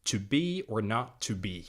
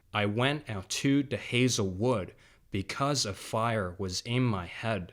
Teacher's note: An iambic meter is simply a way of regulating the rhythm of the poem by stressing every second syllable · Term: iambic tetrameter